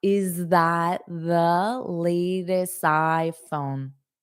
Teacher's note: a little bit of a rising intonation because it's a question